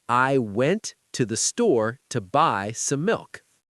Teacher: So the sentence, "I went to the store to buy some milk," sounds more like "I went to the store to buy some milk." The words to and the are almost invisible. They're squeezed into the spaces between the stressed words. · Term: word stress